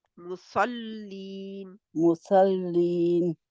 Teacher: स्वाद के लिए मोटा और लीन के लिए फिर बारीक